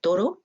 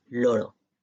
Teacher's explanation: Toro y loro son palabras diferentes porque percibimos la oclusiva alveolar sorda de manera diferencial de la lateral sonora.